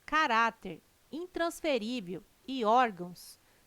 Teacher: tem sua sílaba tônica na penúltima sílaba são paroxítonas